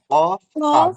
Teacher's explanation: কফ কাফ হ্যাঁ জিহ্বার গোড়া থেকে উচ্চারণ হচ্ছে কফ কাফ হ্যাঁ উচ্চারণ হচ্ছে জিহ্বার গোড়া থেকে